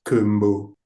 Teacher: with very low pitch like kumbu and that will mean bad